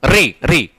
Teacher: अब देखेंगे री को जब बोलते हैं, री को बोलते वक्त जीवा जो है जाकर के मूर्धा से टकराती है, री ना। तो री जो है मूर्धा से बोला जाता है